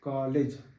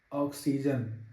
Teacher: ओठ थोड़ा सा गोलाकार हो रहा है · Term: आगत आ